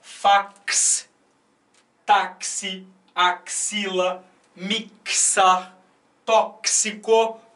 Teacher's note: Esse X não tem som chiado. O som é duplo, é de KS. · Esse X, nas 5, tem duplo som. Esse X é pronunciado como um KS, né? Ks, né? 2 sons consonantais. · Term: dífono, som de KS